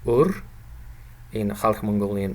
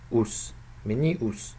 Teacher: Front vowel, again pronounced centrally in Khalq Mongolian.